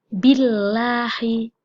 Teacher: Billahi, nggak boleh begitu bacanya, tapi harus meringis karena ini adalah lam tarkik, bukan lam tafkhim